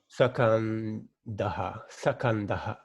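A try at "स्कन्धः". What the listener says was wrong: There is no sa. When you say sa, the vowel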